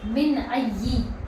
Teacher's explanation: دیکھیے یہاں پر نون ساکن ہے، نون ساکن کے بعد حروف حلقی میں سے یہ حمزہ آیا ہے، تو آواز کیا ہوگی؟ یہاں پر بھی ظاہر ہوگی